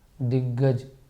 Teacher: अल्पप्राण ग के साथ अल्पप्राण ग आया है